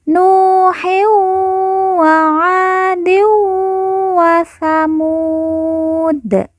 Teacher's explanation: Mu kita baca panjang 2, 4 atau 6 harokat karena di depannya terdapat huruf wawu sukun atau wawu mati sebelum huruf pemberhentian yaitu huruf dal. Kemudian dal di ujung kita sukunkan atau kita matikan karena waqaf atau berhenti.